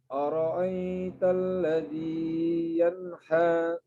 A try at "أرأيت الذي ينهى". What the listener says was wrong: مباشرة bukan mad.